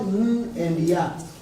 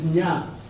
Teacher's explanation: NY is one sound. It's not N and Ya, it's Nya.